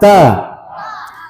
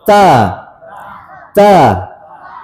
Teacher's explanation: Ta ujung lidah ya. Ini ujung lidah terus bertemu dengan pangkal gigi seri atas. Itu tempat tumbuhnya gigi.